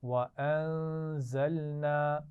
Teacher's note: نون ساکن پر غنہ ہے، زا کی آواز میں سیٹی ہوتی ہے